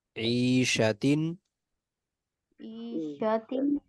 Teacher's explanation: और ता पे तनवीन है, तनवीन के बाद हरूफ हल्की में से हमजा है, तो यहाँ गुन्ना नहीं किया जाएगा।